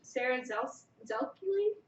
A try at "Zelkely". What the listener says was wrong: I think the Z is silent. It's said Z is silent.